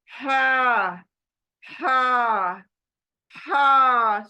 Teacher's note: ये लेटर निकलेगा हलक के बीच से ना ऊपर से हलक के ना सीने के तरफ से नीचे से बल्कि बीच से निकलेगा हलक के